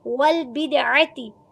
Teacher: والبدعتی واؤ کی زبر کو لام ساکن کے ساتھ ملائیں گے, باقی زیر کو دال ساکن کے ساتھ ملا کر دال پر قلقلہ کریں گے. والبدعتی عین کو وسط حلق سے پڑھیں گے, عین کی زبر کو چھوٹا پڑھیں گے, تا کی زیر کو چھوٹا پڑھیں گے.